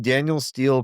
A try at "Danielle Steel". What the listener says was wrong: Daniel, you keep saying Daniel.